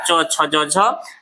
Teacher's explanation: हर्षी दीर्घी च वर्ग य और तालव्य स का उच्चारण कहाँ से होता है, तालु से होता है, इसलिए इसको क्या कहते हैं, तालव्य वर्ण कहते हैं।